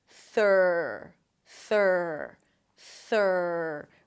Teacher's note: So here's the thing. Stick the tongue out for the TH. It's a voiceless TH. And then pull it in for the R. Make sure the tongue doesn't touch anything on the way in. · Make sure the tongue doesn't touch anything on the way in. And elongate the R a little bit. It's a stir sound, so it's a longer vowel.